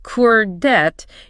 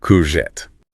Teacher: the correct way is to stress the end.